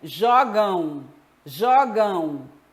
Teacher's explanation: Eu tenho encontro AM. Acontece que esse AM, ele tem um som de ão.